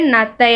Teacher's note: நாக்கோட நுனி பல்லு மேலே பட்டு நத்தை அப்படின்னு சொல்லணும் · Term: நகரம்